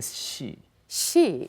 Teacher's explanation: we say the she she without lip rounding